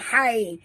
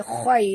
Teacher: huruf kha ya sahabat. Jadi kita kena baca betul-betul tebal. Khai, bukan hai, tapi khai.